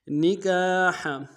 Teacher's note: نکاح میں کاف کے سالف مدہ ایک مقدار میں کھینچیں گے، ہا کو گہرائی سے ادا کریں گے